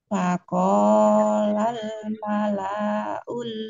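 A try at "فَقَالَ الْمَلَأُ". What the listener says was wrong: malaul, lanya pendek.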